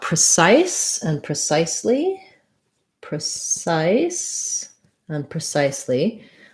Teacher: second syllable stress on both of these words and so your cif syllable sounds like size size um it